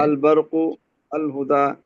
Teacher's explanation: اب یہاں پر ہم نے الف لام کو ظاہر کیا، ادغام نہیں کیا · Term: اظہار